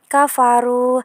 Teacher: ro yang dibaca tafkhim atau tebal karena ro yang berharokat dummah. Ru mad tabi'i karena mad yang tidak bertemu hamzah sukun dan tasydid.